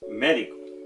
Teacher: el acento en la antepenúltima